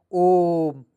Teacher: ओम में ओ को अधिक लंबा खींचने पर ओम बोला जाता है। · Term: पलूत स्वर्ण